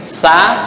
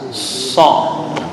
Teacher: Sama dengan sin, sa, kalau sot lidah naik ke atas.